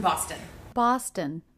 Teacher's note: two syllable city name with stress on the first syllable so the second syllable unstressed must be short to contrast the length and shape of the first syllable